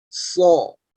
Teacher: Ya, perhatikan suaranya, perhatikan juga cara bacanya, tidak memonyongkan berlebihan, tidak so, tapi so. Karena suara o yang ditimbulkan itu akibat pangkal lidah yang naik pangkalnya. Maka suara yang dihasilkan pun tebal.